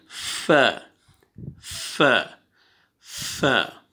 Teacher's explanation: ये फ्रंट वाले सामने वाले जो दो दांत हैं वो टच हो रहे हैं नीचे वाले लिप्स पे। ये देखें, ये सामने वाला दो दांत जो हैं, ये अंदर जो तर वाली जगह है लिप्स की, नीचे वाले जो होंठ हैं जो अंदर तर रहती है, ठीक है, जो गीली रहती है जगह लिप्स पे, वहाँ पे सामने वाला दो दांत लगाएंगे, फ फ फ।